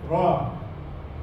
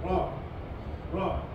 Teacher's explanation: Masa sebut ra tu hujung lidah tu naik ra. Okey. Hujung lidah naik hujung besi tu kan.